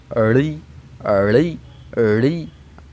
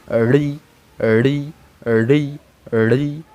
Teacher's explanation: আমরা যেভাবে রি উচ্চারণ করি সচরাচর সেভাবে কিন্তু আসলে রির উচ্চারণটা হয় না। বাংলা ব্যাকরণ অনুযায়ী রি এর উচ্চারণ কিন্তু মূর্ধা এবং উল্টানো জিহ্বাগ্র দিয়েই হয়। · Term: মূর্ধন্য বর্ণ